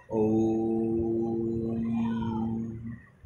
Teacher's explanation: ओम को जो अपन जितना लंबे समय तक खींच पाते हैं तो वो प्लुत स्वर के ही उदाहरण का रूप है